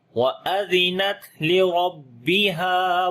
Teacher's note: را کو موٹا پڑھیں گے اور ہا کو لمبا کریں گے. الف مدہ ہے, ہا کو گلے کے درمیان والے حصے سے پڑھیں گے.